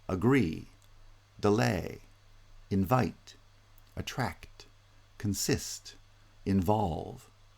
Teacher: my voice pitch rises from the first syllable to the second syllable among the verbs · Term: final stress